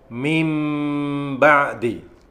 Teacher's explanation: Iklab. Jadi huruf nun pada kata min itu berubah menjadi bersuara mim.